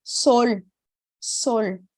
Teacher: Com o, eu vou sempre ter o som de O fechado, não O.